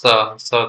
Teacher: दंत स का उच्चारण करते समय दांतों से घर्षण करती है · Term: उष्म व्यंजन